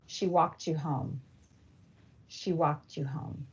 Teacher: a final t sound in a word and an initial y sound in the following word fuse to make a ch sound due to a feature of connected speech called coalescence.